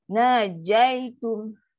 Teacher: Dia jim tak ada angin. Tepat dia keluar.